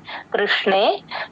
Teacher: కృ ఊ సౌండ్ రాకుండా చూసుకోండి